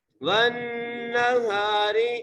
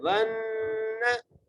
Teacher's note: واو کو نون سے ملانا ہے، نون پر ہم غنہ کریں گے